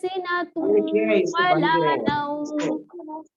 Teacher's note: جب ہم سنتوں کہہ رہے ہیں, یہ ناک میں آواز جا رہی ہے, اس کو ہم غنہ کہتے ہیں